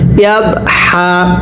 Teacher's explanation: এরপরে পড়ুন ইয়া দত জবর ইয়াদ, এটা কিন্তু দত, এটা দাল না, পড়ুন ইয়া দত জবর ইয়াদ, সবাই পড়েন নরম করে ইয়া দত জবর ইয়াদ, হা জবর হা, হাটা উচ্চারণের সময় গলার মাঝখান থেকে বাতাস বের করবেন